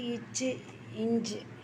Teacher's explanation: நாவின் இடைப்பகுதி நடு அன்னத்தில் இடைப்பட்ட பகுதியில் பொருந்துவதால் பிறப்புவது